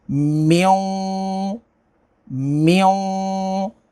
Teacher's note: नून साकिन के बाद वाऊ है तो यहाँ पर इदगाम होगा